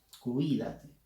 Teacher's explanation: Cuídate es una palabra esdrújula, por lo tanto la fuerza de voz está en la I.